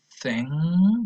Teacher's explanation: this one is voiceless, meaning there is no vibration when you pronounce it. So you say thing, so no vibration in the sound here.